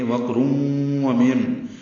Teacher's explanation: من میں نون ساکن ہے اور اس کے بعد با آ گیا ہے جس کی وجہ سے اقلاب ہو رہا ہے، من کی جگہ مم پڑھیں گے، نون کو میم سے بدل دیں گے، اسی کا نام اقلاب یا ابدال ہے۔